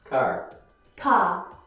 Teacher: It's also very common in my Australian accent as well. Standard American English clearly pronounces the R after a vowel sound, where most British English speakers don't.